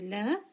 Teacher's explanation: So please do not stretch this la in the beginning. It's just one letter length. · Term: short la